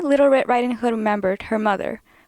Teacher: this speaker said mother with Creek on the ER